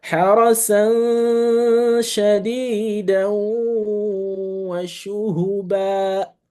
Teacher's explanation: So I make the ba longer. I didn't pronounce the fathatani when I stop on the ba. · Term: mad al-iwad